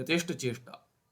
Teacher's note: राग जन राग जन्यादिक यथेष् चेष्टाधिकम नस्या चेष्टा नहीं होनी चाहिए यहां पे ठकार नहीं टकार होना चाहिए यथेष्ठ चेष्टा ठ महाप्राण नहीं अल्पप्राण होना चाहिए